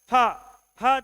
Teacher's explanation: प उसके बाद फ फ जैसे बोलते हो पूरा मंह वायु से भर जाता है